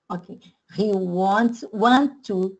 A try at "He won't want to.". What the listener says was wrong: No, more O, no. Again.